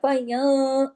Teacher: इख्फा में आवाज थोड़ी नाक में जाती है, थोड़ी बाहर रहती है और गुन्ना भी होता है लेकिन छोटा गुन्ना होता है, बड़े से छोटा दूसरे दर्जे का। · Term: इख्फा हकीकी